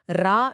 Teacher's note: ர உச்சரிக்கும் போது நாவின் நுனி மேலத்தின் மையப் பகுதியை நன்றாக உரசும் போது பிறக்கிறது. · இது கொஞ்சம் அழுத்தமாக அதிர்வோடு ஒலிக்கும். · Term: வல்லின ரகரம்